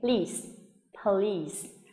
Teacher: Âm ở cuối nguyên âm y dài căng miệng